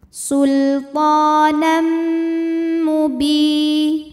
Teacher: Sultanam, ada hukum idgham bi gunnah karena ada tanwin fathah menghadapi huruf mim, maka tanwinnya masuk ke mim disertai dengung. Sultanam mubi, bi matobi'i dhahiri karena ada ya sukun didahului kasrah, maka huruf ba panjang 2 harokat.